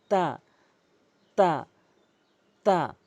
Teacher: জিহ্বার আগাটি সামনে দুটি দাঁতের গোড়া থেকে এভাবে উচ্চারণ করি